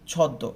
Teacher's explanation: আমি কিন্তু এখানে ময়ের উচ্চারণটা করি না